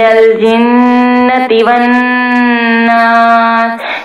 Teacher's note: یوسوس فی صدور الناس من الجنۃ والناس، یہاں پہ دیکھیے گا نون مشدد ہے، نون مشدد جہاں پر بھی آئے گا تو ہم گنہ واضح کر کے پڑھیں گے